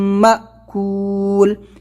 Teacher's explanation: حمزہ ساکنہ کو پڑھنے میں جھٹکا ہوتا ہے